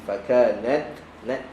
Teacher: Angin keluar tapi lidah masih pada makhraj huruf ta.